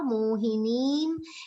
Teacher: Because it is followed by ma, anuswar is pronounced like ma.